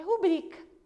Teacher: E só quem conhece a língua portuguesa mesmo vai pronunciar corretamente, que é rubrica. A sílaba tônica é no bri e não no ru. Se fosse no ru, teria acento.